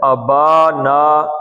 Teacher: با اور نا دونوں مد اصلی ہیں، 2 حرکتیں